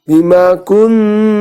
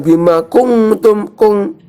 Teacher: Bukan matanya NG ya. Tapi KUNT langsung masuk ke huruf ta. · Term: ikhfa